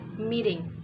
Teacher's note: become a t voiced so it sounds like d